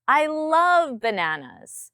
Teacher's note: My tone comes up on love.